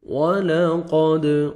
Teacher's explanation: قاف کو موٹا کر کے پڑھنا ہے، دال حروف قلقلہ میں سے ہے، ڈبل ساؤنڈ آئے گا۔